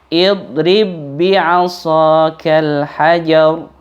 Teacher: Karena ba yang pertama langsung masuk pada ba yang kedua. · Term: idgham